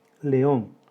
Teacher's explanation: León, 2 sílabas. Hiato entre la vocal abierta E y la vocal abierta O. La sílaba tónica es la última.